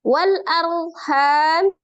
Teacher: Ro sukun sebelumnya fathah. Dibaca ro-nya tebal ya, tafkhim.